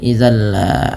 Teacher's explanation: bunyi tanwinnya dimasukkan langsung ke huruf lam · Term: Idam bila gunah